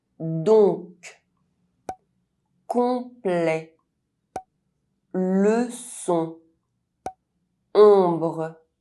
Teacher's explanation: ON and OM are pronounced [ɔ̃]. [ɔ̃] is a nasal vowel.